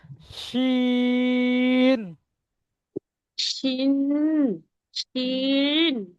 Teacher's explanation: জিভের মাঝখান উপরে শিন, তালুর সাথে লাগান।